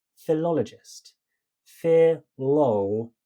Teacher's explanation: the analysis of emphasis matches my hypothesis that the second beat is the one we stressed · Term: stress of the second sound